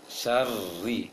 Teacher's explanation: Berarti hanya satu ro yang ditebalkan di surah Falaq, sedangkan min syarri itu tipis, tidak ditebalkan. Berarti ketika mengucapkan ro syarrinya bibir tidak perlu dibulatkan, dan juga lisannya tidak perlu ditebalkan dia. Syarri, seperti baca ri dalam penglafazan lafaz huruf Latin, huruf Indonesia.